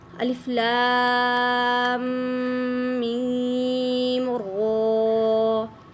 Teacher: را کو پھر پر کیا، میم کو مضبوطی کے ساتھ پڑھا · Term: میم مشدد